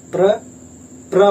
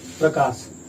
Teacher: रा का उच्चारण देर तक हो रहा है और पा का उच्चारण बहुत कम समय के लिए, इसलिए इसका मतलब यहाँ पे पा जो है आधा।